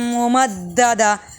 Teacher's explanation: میم مشدد پر غنہ اور نون مشدد پر غنہ